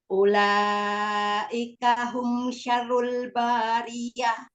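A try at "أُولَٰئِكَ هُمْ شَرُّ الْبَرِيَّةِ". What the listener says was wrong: Ya, lebih diperhatikan lagi panjang pendeknya. Ikahum syarrul bariyah. Pendek ya. Tasdid. Tasdid di huruf ro. Syarrul. Syarrul bariyah. bari, tidak bari. Bariyah.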